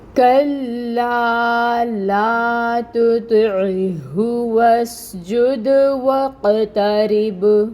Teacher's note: آپ کو اس آیہ مبارکہ میں قلقلہ کافی دفعہ نظر آئے گا، کافی حروف پہ آپ کو قلقلہ کرنا ہے۔ یہاں پہ دال پہ قلقلہ کرنا ہے، یہاں پر قوف پہ قلقلہ کرنا ہے، اور یہاں پہ با پہ قلقلہ کرنا ہے